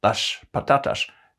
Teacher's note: s and z merged to a special kind of s where the tongue was further back